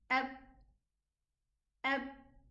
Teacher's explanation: And you also hear the softness of this letter because the sound is flowing. While the ba has a contrary character, and this is hardness, meaning that the letter terminates in its exit. Ab, ab. While the noon, for example, has this nasal sound.